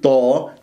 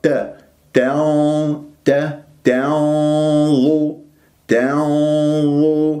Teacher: والتاء نضم الشفاه فيها ولا أفخمها